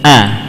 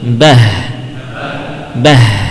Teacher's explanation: Bedanya antara hamzah dan ha, kalau hamzah terucap dengan tertutupnya atau bertemunya dua pita suara.